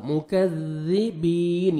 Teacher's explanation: کاف کو نرمی سے ادا کریں گے، ذال کو بھی باریک پڑھیں گے اور کاف کو بھی باریک پڑھنا ہے. ذال کو نرمی سے ادا کریں گے تاکہ زا میں ساؤنڈ مکس نہ ہو